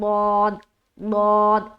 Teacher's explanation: जबान का जो बगली किनारा है उसको दाढ़ में सटाते हुए, करवट लेते हुए हर्फ दौद अदा होता है